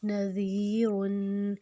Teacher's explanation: اوپر اور نیچے کے دونوں دانتوں میں زبان کی نوک کو لے کے اس کو نرمی سے ادا کرنا ہے اور 2 حرکت لمبا کرنا ہے، کیونکہ آگے جو یہ ہے یہ کے اوپر جزم ہے۔ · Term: نرمی والا حروف